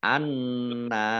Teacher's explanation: Nun tasdid dibaca ghunah atau mendengung ditahan dua harakat